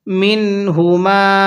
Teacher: এই নুন সাকিনটা স্পষ্ট করে পড়বো